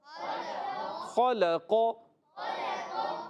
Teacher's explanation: خا جو ہے حلق کے اوپر والے حصے سے ادا ہوتا ہے